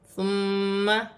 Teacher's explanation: میم مشدد ہے، میم مشدد میں غنہ کیا جائے گا